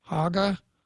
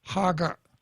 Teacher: if you put a glottal stop on the end of it it changes the meaning